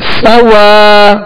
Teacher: کھینچے ادا کریں گے مگر ہونٹوں کو گول نہیں کریں گے، صاد کو پر پڑھیں گے، سیٹی کی آواز اس میں پیدا ہوگی